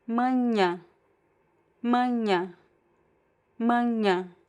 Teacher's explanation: This is particularly challenging as well because it's just the sound. So again, you can try to produce like a very subtle N at the end if that helps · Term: nasal